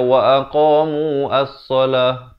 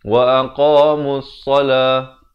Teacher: Nampak tak hamzah wasal ni kalau dia di tengah-tengah ni dia tak ada fungsi bacaan.